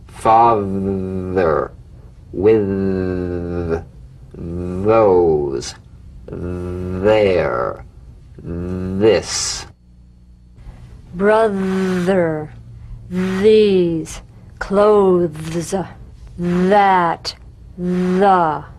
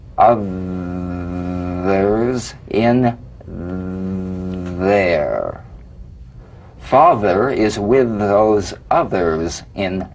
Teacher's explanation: slip the rim of the tongue between the teeth and sing feeling a buzz or vibration feel that vibration on the tongue outside the teeth you've got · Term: voiced th